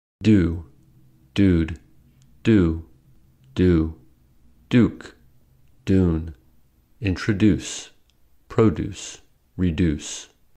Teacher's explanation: y dropping means pronouncing U as u in standard American English